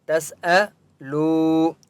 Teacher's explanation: تسألو، سین کے پر سکون ہے، تا کو سین کے ساتھ ملائیں گے. تسألو، واو مدہ ہے، لام کو ایک الف کی مقدار کھینچ کر پڑھیں گے